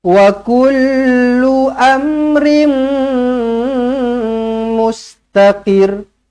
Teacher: Wa kullu amrin. Tanwin tak selari bertemu dengan mim sabdu idgham ma'al ghunnah. Terus rapatkan bibir di sini, jumpa dengan mim sabdu, dengungkan 2 harakat.